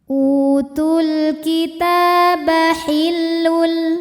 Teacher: Ta mad tabi'i muqaddar karena huruf ta berbaris fathah panjang, maka huruf ta panjang 2 harokat